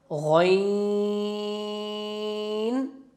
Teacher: ادنا خلق یعنی کہ منہ کی طرف والا حصہ، خلق کے منہ کی طرف والا حصے سے غین ادا ہوتا ہے